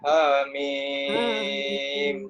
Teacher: Daripada perkataan ha nak ke mim, tak ada dengung. Maksudnya kita terus masuk. Ha satu perkataan, mim satu perkataan. · Dia 6 harakat bacaannya. Mim tu, mim tu 6 harakat.